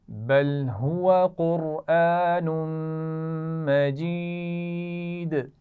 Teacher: قرآن اس میں قاف اور را دونوں موٹی پڑھی جائیں گی